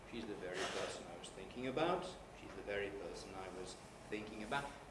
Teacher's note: a low head and a low rise